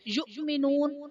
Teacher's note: یؤمنون حمزہ ساکنہ ہے، جھٹکا دے کر پڑھیں گے، واو ساکن سے پہلے نون پر پیش، واو مدہ کا قاعدہ، اور حرف مدہ کے بعد عارضی سکون یعنی وقف کی وجہ سے ہم نون کو ساکن کریں گے تو یہاں پر مد عارض کا قاعدہ ہوگا۔